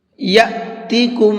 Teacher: حمزہ ساکن کے پڑھنے میں جھٹکا ہوتا ہے